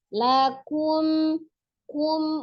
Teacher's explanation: monyongkan dulu bibirnya ketika dhamma di huruf kaf, baru sempurnakan di huruf mim sukunnya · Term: izhar safawi